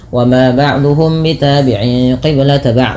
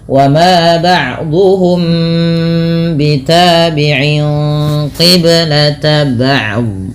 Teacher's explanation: ada mim mati bertemu dengan huruf ba. Ini merupakan bacaan ikhfa syafawi, perlu ditahan dalam membaca nya. Sebagian kita lupa menahan sehingga hanya sekedar membaca ba' wa ma ba'dhum bitabi'in qiblata ba'd, misalkan seperti ini.